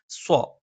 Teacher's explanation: നാവിന്റെ കൂർത്ത അറ്റത്തിന്റെ മുകൾഭാഗം രണ്ടു വരി മുൻപല്ലുകൾക്കിടയിൽ പിന്നിലായിട്ട് വരികയും നാവിന്റെ മധ്യഭാഗം മുകളിൽ സ്പർശിക്കാത്ത രീതിയിൽ മുകളിലേക്ക് ഉയരുകയും ചെയ്യും